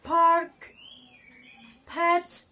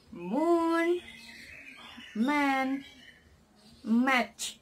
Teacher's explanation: are produced by using both the upper and lower lips